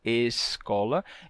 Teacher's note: como o S em final de sílaba, ele também tem esse chiadinho, né? Então você teria uma palavra como escola, com um chiado leve, escola.